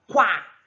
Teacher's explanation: a vogal U que vem primeiro, ela é uma semivogal. E o A é uma vogal. Então, eu tenho um ditongo crescente, do menor para o maior, da semivogal para a vogal.